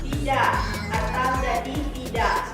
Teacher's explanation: Biasanya dalam percakapan sehari-hari bercontoh tidak atau jadi tidak. Karena bunyi K di akhir kata sering dihilangkan dalam percakapan kita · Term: elisi